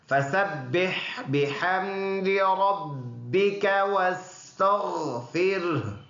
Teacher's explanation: ہا کے اوپر جو پیش ہے اس پیش کو سائلنٹ کریں گے، ہا کو پڑھیں گے، وَاسْتَغْفِرْهُ بن جائے گا. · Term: وقف